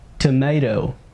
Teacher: معنى ذلك أن T حينما تأتي بين حرفين متحركين تنطق كدال خفيفة. أوكي، إذن تنطق soft D بمعنى دال أو D خفيفة شبيهة ب R. أوكي، ب Spanish R الراء الإسبانية.